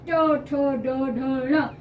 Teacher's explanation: तालू से थोड़ा सा आगे दांतों के पीछे और तालू से थोड़ा आगे वाले स्थान को छूकर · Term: मूर्धन्य